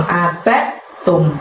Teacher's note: bukan kol-kolah ya, jadi tidak perlu dimantulkan, tapi masukkan ke huruf ta. Abad, langsung abad tum.